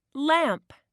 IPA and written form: læmp (lamp)